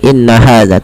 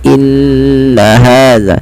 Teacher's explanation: ada bacaan gunnah pada lafal nun berharokat tasydid. Maka caranya adalah menahannya.